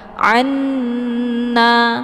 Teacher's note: Jangan anna langsung tasydid nunnya tapi ditahan dulu ya biar ada suara yang mendengung. Nah, kata lain anna ini juga disebut dengan idgham mislain. · Ini merupakan idgham. Jadi nun yang pertama ini dimasukkan ke dalam nun yang kedua sambil ditahan. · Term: idgham bi ghunnah